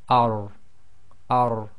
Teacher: And the tafkhim is really done by lifting the back of the tongue a little bit. So you say ar, ar.